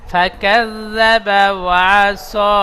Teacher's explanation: জাল জিহ্বার আগা, সামনে উপরে দাঁতের আগার সাথে হালকা ভাবে ঠেকিয়ে